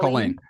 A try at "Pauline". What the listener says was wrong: Pauline with a P.